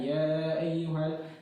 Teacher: ya dibaca selama 5 harakat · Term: mad jais munfasil